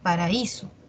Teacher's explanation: Está la A y la I, son de diferente timbre. La A es abierta, la I cerrada, y la mayor fuerza de voz está en la cerrada. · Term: hiato acentual